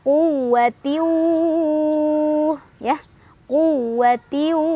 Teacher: baru idgham bhunah karena ada tanwin kasrah bertemu dengan huruf wau cara bacanya tanwinnya masukkan ke huruf wau sambil berdengung